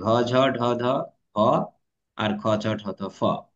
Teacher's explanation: আর বাতাসের চাপ যাদের বেশি আছে তাদের নাম নিয়েছি মহাপ্রাণ